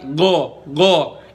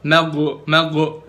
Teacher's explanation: Itu sama kayak huruf G, padat gitu kan, g. Cuma bedanya lebih dalam aja di leher, jadinya kayak huruf qaf deh.